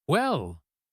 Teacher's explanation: That rising intonation on well is a huge closing signal.